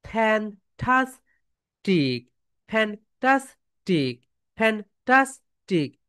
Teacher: Okay my dear soldiers, তাহলে তোমাদের ভয়েসটা এখানে কি হইলো বলো তো, মিডল স্কেল থেকে আপ স্কেল, এরপরে আবার ডাউন স্কেলে চলে আসলো।